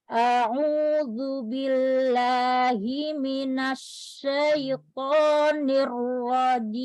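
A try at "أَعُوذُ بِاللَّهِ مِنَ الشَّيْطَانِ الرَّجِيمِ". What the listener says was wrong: Ketika masuk ke to, bibir nggak ikut bekerja. Asyaitonir rajim. Jangan ada berhenti ya. Tonir rajim. Anti jangan menempatkan duluan ujung lidahnya itu ke tempat tumbuh gigi seri atas untuk bisa ngangkat pangkal lidahnya. Jadi dia kayak nyangkut barengan, pangkal lidah naik, ujung lidahnya dibenturkan di tempat tumbuh gigi itu ya, di yang gusi yang atas. Bareng. Jangan bibir bawah nggak ikut. Syaiton.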